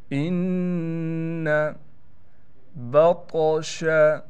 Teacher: तौ पर क़लक़ला किया जाएगा और तौ को मोटा भी पढ़ेंगे